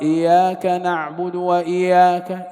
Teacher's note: بعض الطلبة يقرأ إياك نعبد وإياك هذا لم يشدد إيش؟ الياء، لم يشدد الياء، خففها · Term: تخفيف المشدد